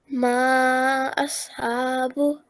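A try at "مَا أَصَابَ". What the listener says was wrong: Slightly longer, just very slightly longer. Ma ashabu.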